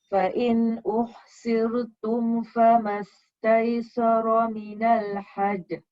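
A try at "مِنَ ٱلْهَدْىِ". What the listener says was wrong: Minal hadi. Dia bunyi ya sikit. Bunyinya ya, bunyi dal hadi. Hadi.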